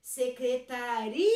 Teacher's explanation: Secretaria, o ri é mais forte, que é o lugar. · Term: sílaba tônica